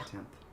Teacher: You can get an epenthetic T in between the N and the theta.